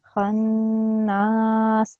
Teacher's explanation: Khannas, and it needs to be prolonged for up to 2 seconds because of the alif mad.